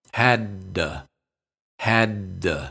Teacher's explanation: be sure to say both D's distinctly don't release the first one just hold it then release the second one